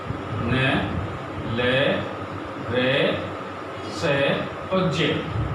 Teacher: वत्सल्य वर्ण, क्योंकि इनका उच्चारण मसूड़ों द्वारा होता है।